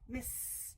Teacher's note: your voice box is not going with that s sound. So, it's going to say, the ed will say missed.